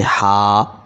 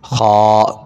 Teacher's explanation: ہا، گلے کے درمیان سے رگڑ کھا کر، خا، گلے کے شروع سے آواز تھوڑی سی موٹی